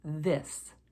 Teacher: the hard th sound is one where we use our voice as in the word this there's a vibration and a little · one where we use our voice as in the word this there's a vibration and a little bit of buzz in your tongue as you use the hard th